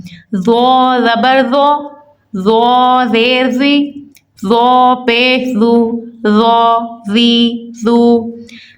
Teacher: اسی طرح ذو کو بھی ہم نے ذال والے طریقے سے ہی پڑھنا ہے، نرمی سے، لیکن پر اور موٹا، کیونکہ یہ مستعلیہ ورڈ ہے۔